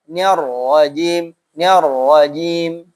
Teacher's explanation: Ra itu ya tidak terlalu bergetar. Nir rajim ya, jangan terlalu bergetar seakan-akan ra-nya nanti 2. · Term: tarkik